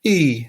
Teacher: so e is a high level tone that's number one